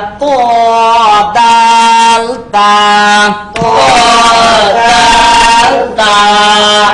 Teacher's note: জিহ্বার আগা, সামনের উপরের, সামনের উপরে, দুই দাঁতের গোড়ার সঙ্গে লাগাইয়া